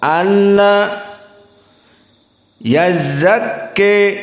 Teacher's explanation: asalnya an dan la, maka diidghamkan nun kepada lam